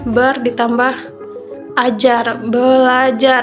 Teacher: kata ber yang ada r nya diganti dengan huruf L jadi r nya dileburkan diganti dengan l sehingga menjadi belajar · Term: perubahan fonem